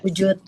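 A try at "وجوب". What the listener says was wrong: Wujub pakai ba ya, pakai ba. B.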